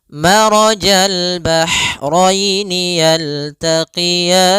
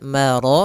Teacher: Pada lafal maraja, ro-nya tebal disebabkan dia ro yang berharakat fathah.